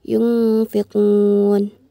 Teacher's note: Nun sukun bertemu dengan huruf fa yang berarti ikhfa hakiki dan dibaca dengan samar-samar